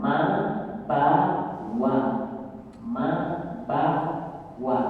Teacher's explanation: Kemudian ma juga di bibir. Kedua-dua kita lihat bibir atas disatukan sama bibir bawah, muncullah mereka bertiga ini